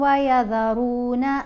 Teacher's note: ذال کے نیچے زیر ہے، ساتھ یا ساکن ہے، حرف مدہ ہے۔ ہم نے ذال کو ایک الف جتنا لمبا پڑھا